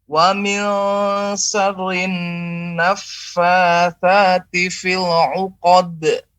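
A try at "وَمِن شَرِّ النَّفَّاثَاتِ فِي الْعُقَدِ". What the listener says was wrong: Baik, ini banyak sekali huruf yang keluar daripada hidung ini. Coba sekali lagi ulangi kata fil 'uqad. Dengan cara melebarkan dan santai saja. Fil 'uqad. Uqad. Sambil dilebarkan. Uqad.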